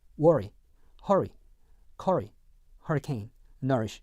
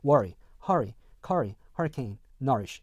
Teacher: worry, hurry, curry, hurricane, nourish 라고 했었을 때요, 이렇게 R 사운드가 이렇게 있고 모음으로 이렇게 연결이 되어 있는 R 사운드 다음에 이렇게 모음이 오는 경우에 이 앞에 거를요 그냥 어로 발음합니다